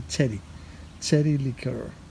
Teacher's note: the Greek language doesn't have the CH sound for cherry so this is a TS sound and I have the th sound so this will be Teddy